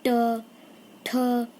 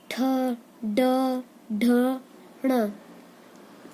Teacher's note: टवर्ग में जो मूर्धा होती है उसे छूती है वायु